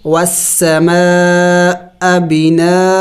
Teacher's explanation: یہاں پہ دیکھیں اگر وقف کرے تو پھر ہم نے حمزہ دو زبر ان پر وقف کریں گے اور وقف میں ہم نے ایک زبر کو گرانا ہوگا، بنا. اس لیے کہ جہاں دو زبر آ جائے تو وہاں پہ وقف میں ایک زبر کو گرایا جاتا ہے.